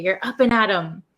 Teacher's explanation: the actual word is up and at them, but we don't pronounce it them. We say M. We take off the TH sound. So up and at 'em sounds like you're gonna face your day.